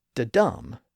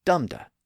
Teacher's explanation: Each beat is supposed to have the stress on the second syllable, not the first. Da-dum, not dum-da.